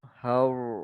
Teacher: Har kan, bagi sikit ra tu tebal.